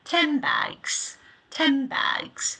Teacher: my lips are closing to form the M sound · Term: assimilation